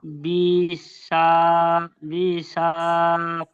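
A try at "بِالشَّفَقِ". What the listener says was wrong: টান নেই কোথাও, টানগুলো একটু খেয়াল করবেন।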